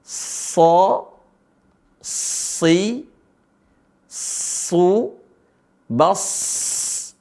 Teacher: dia berdesis dan begitu juga dia punya sifat namanya asfir desisnya begitu keras · Alirin aja suara sad, bas ketika sukun. Taib. Dan dia berdesis.